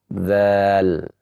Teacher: Dan huruf zal yang bertemu antara ujung lidah dengan ujung gigi seri yang atas